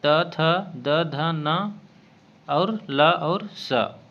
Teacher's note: त वर्ग त, थ, द, ध, न और ल और स यह दंत में आता है